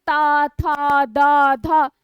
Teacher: जीव क्या हो रहा है दांत को स्पर्श कर रहा है